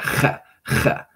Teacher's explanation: It's a ch, and it's more of like a fricative, a rough. It's not a trill, but it's more harsh and rough.